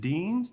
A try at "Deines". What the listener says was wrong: Not quite. Deines. Two-syllable.